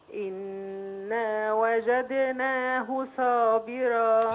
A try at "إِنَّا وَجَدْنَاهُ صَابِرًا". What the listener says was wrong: هي صاد صابرا.